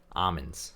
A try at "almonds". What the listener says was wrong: you're not pronouncing the l enough